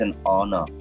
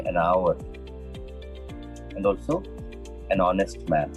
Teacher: So H is completely silent there.